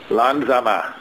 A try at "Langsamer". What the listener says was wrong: You might want to say that with the inflection that makes it a request instead of Langsamer. Well, how about langsamer bitte? Langsamer bitte.